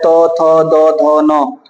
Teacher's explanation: इसका उच्चारण स्थान दंत है, दंत से उच्चारित होता है